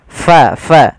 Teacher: untuk huruf Fa harus hati-hati harus alirkan nafasnya Jangan sampai kita merubahnya menjadi palaqo diganti dengan p